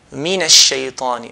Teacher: we're going to raise our voice on the first syllable, the mi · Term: stress